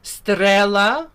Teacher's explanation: And so again, you have that soft T, when you do that T, you have to stick your tongue up in the hard palate. Strela, we're going to roll our R.